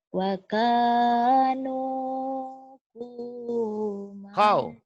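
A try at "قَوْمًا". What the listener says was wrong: Kau bukan ku. Kau. Kau Wakanu kau.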